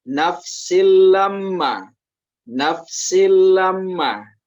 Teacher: huruf sin yang tanwin ini dimasukkan ke bacaan huruf lam tanpa dengan dengung. Sehingga dia berbunyi nafsil lamma. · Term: idgham bila gunnah